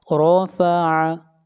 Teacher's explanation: را کو موٹا پڑھیں گے، را کے اوپر فتحہ ہے